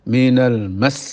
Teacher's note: Lah mas memanjang itu bukan karena tasydidnya sin, tapi karena sin itu sendiri memiliki sifat rikhwah. Rikhwah itu suara mengalir.